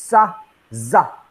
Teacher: The tip of your tongue touches alveolar ridge. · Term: alveolar fricative